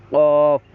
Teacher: 4 number মাখরাজ হচ্ছে জিহ্বার গোড়া তার বরাবর উপরে তালুর সাথে লাগিয়ে, সেখান থেকে একটি হরফ উচ্চারণ হয় কফ, কফ। এই জিহ্বার গোড়াটা গিয়ে উপরে তালুর সঙ্গে লেগেছে, সেখান থেকে একটি হরফ উচ্চারণ হচ্ছে কফ, একটু ধাক্কা দিয়ে হবে কফ, কফ।